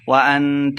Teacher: وَأَنْتَ اخفا یعنی غنہ کر کے پڑھیں گے